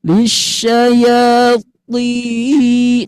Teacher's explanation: Nah, tinggi Bunda agak angkat sedikit ya. Nah, iramanya angkat, cuma nadanya aja yang rendah.